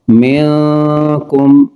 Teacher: نون ساکن کے بعد کاف حروف اخفاء غنہ کر کے پڑھیں گے۔